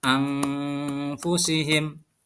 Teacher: dibaca secara samar atau mendengung, yaitu ditahan dengan 2 harokat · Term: ikhfa